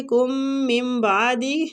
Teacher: یا نون ساکنہ کے بعد تو ادھر ہم اقلاب کریں گے، نون ساکنہ کو ہم میم میں بدل دیں گے